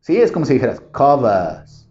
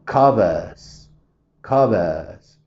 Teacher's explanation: pero quitas la r o sea nada más dejas esa parte esa e alargada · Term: británico